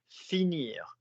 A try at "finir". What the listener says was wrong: Don't bang the first one.